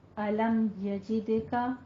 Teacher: تو یہاں پہ ہم میم ساکن کا اظہار کریں گے